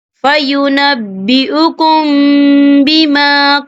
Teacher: میم ساکن کے بعد جو ہے با آ رہا ہے. تو یہاں پر اکفا شفوی ہوگا اور ہم یہاں غنہ بھی کریں گے